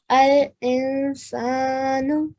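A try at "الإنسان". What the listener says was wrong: ال کو شارٹ رکھیں گے. الانسان.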